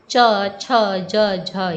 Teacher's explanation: चवर्ग संपूर्ण चवर्ग जो है वह तालू से उच्चरित होता है